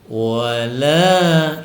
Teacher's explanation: Mad Thobi'i dibaca panjang dua harakat satu ayunan